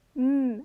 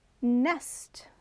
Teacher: when you pronounce the sound m your lips close right um as in monkey but when you say nest the letter n it's slightly opened